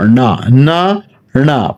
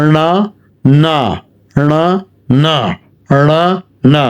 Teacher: প্রথমটাই মূর্ধন্য বলতেছি, পরটা দন্তন্য বলতেছি।